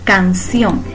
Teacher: la palabra canción lleva mayor énfasis en ción, por ello a esa llamamos sílaba tónica.